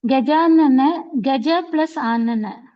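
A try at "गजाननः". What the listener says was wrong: No, don't miss the Visarga pronunciation.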